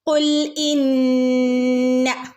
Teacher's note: നൂൻ്റെ മുകളിൽ ശ്രദ്ധയുണ്ട്, നന്നായിട്ട് മണിച്ചു കൊടുക്കുക കേട്ടോ.